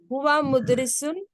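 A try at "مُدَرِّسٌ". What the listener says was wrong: Mudarrisun. There is tajdeed. Mudarrisun. Huwa mudarrisun.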